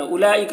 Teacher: اولئک، یہاں پر واو کو نہیں پڑھنا ہے